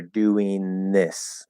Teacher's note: do a dental n, and then instead of releasing that and doing a th, you kind of just pull your tongue off of the teeth, and it will be interpreted, it'll be interpreted pretty much as a th.